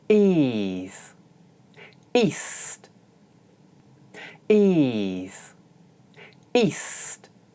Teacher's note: in ease, the vowel is followed by a voiced consonant, while in east, the vowel is followed by an unvoiced consonant.